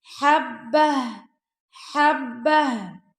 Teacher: ہا کی جو آواز ہے وہ گلے کے آخری حصے سے آئے گی